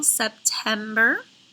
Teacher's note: It is accented in the middle syllable, September.